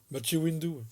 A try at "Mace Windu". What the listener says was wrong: Mathieu, tu dis Mathieu, toi ?